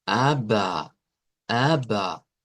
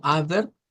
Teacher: Y es porque se cambia el sonido vocal, mejor dicho, se usa un sonido vocal en vez de un sonido de una R